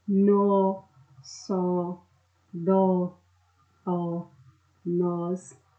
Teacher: nós temos aqui monossílabos tônicos, ou seja, que tem uma intensidade maior ao ser pronunciado